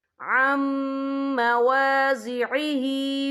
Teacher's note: युहर्रिफूनल कलिमा अन मवाज़िइही, या देखें अम, यहाँ नून साकिन है। नून साकिन के बाद जो है मीम आ रहा है। मीम जो है रूफ़े यरमलून में से है, तो यहाँ पर इदग़ाम होगा, तो हम इसे गुन्ने के साथ पढ़ेंगे।